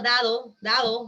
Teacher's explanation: el sonido oclusivo dental sonoro cuando se encuentra entre vocales se debilita